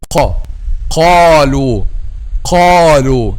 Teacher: I just raise the back of my tongue, or the deepest part of the tongue, like qa, qalu, qalu. You see, it's a heavy letter without circling the lips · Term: letter qaf